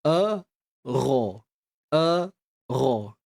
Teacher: Hamzah pangkal kerongkong. Huruf ghain hujung kerongkong.